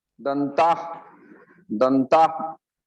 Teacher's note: आधा उच्चारण होगा उसका, विसर्ग का हा बोलेंगे नहीं